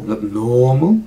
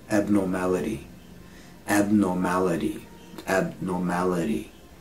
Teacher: So the original word is abnormal, which is like or, abnormal. This one is abnormality. It's a short or.